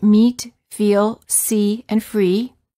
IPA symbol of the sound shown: i